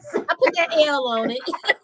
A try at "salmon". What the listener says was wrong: BCB said the L is silent.